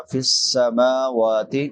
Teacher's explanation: सीन सीटी वाले हरूफ में से है।